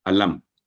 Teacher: मीम को इजहार के तौर पर 1 सेकंड की आवाज़ के साथ वाज़ेह करके पढ़ेंगे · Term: इजहार शफ़वी